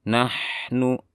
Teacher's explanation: ada ha sukun karena dia bersifat rokhawah, suaranya ditahan